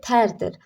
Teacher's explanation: Burda tərdir də r düşür.